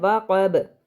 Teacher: قطب جد وہ 5 حروف قاف طا با جیم دال، تو با پر ہم کریں گے قلقلہ